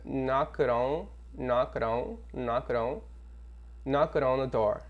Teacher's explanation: A gente vai emendar o K com o O.